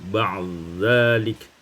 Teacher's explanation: idghamkan dal pada zal menjadi ba'dzalik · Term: idghamul dal fi dzal